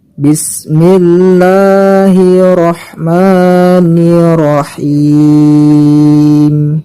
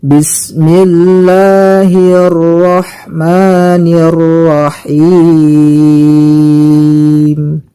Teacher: Di ayat yang pertama ini biasa terjadi kesalahan ketika membaca huruf ro yang bertasydid. Kesalahannya ialah karena tidak mentasydidkan huruf ro. · Yang seperti ini salah ya teman-teman. Yang benar ialah kita mentasydidkan huruf ro-nya.